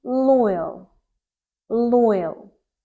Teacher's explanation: When you say L, you put the tip of your tongue on the alveolar ridge